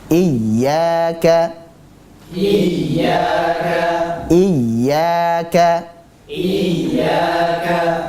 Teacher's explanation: kata iyaka pada ya dua harakat saja Mad thai'i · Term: mad tabi'i